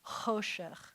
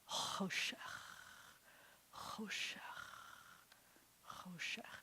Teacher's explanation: And then we have that final chaf, choshech. And the accent is on the cho.